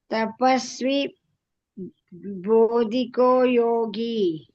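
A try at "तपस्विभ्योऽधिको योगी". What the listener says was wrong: ಇಲ್ಲಿ ಬರತ್ ನೋಡಿ, ಜ್ಞಾನಿ ಬ್ಯೋಪಿ ಅಂತೀರಾ. ಅಲ್ಲಿ ತಪಸ್ವಿ ಬ್ಯೋ ಅಂದ್ರೆ ಬೋ ಅಂತೀರ ಬರೀ. ಅಲ್ಲ, ಇಲ್ಲಿ ಕರೆಕ್ಟ್ ಆಗಿ ಹೇಳ್ತೀರಾ, ಜ್ಞಾನಿ ಬ್ಯೋಪಿ ಅಂತೀರಾ. ಅಲ್ಲಿ ತಪಸ್ವಿ ಬ್ಯೋತನೇ ಇದೆ. ತಪಸ್ವಿ ಬ್ಯೋದಿಕೋ ಯೋಗಿ.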